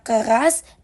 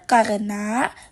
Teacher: bunyi R pada kata keras diucapkan dengan getaran lidah yang kuat, sedangkan pada karena bunyi R yang lebih lembut. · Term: alofon